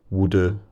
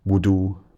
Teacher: the U could have been more centralised